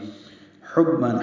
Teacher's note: حبًا ہا وسط حلق سے ادا کریں گے. با سے ملائیں گے.